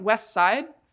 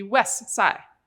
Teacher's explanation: not pronouncing the t or the d sound at the end of a word. So something like west side gets to be west side.